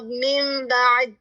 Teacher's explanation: آپ نے نون کو تبدیل کر دیا میم سے